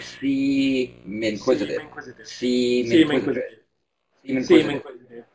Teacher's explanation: And again, always think that you're carrying over the final consonant of the preceding word, seem, carrying that over that M and using the M to start the second word. So it's really like seem inquisitive.